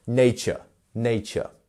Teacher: We have a first syllable stress, and then the rest of the word falls off of that.